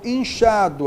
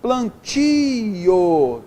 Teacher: a tônica é oral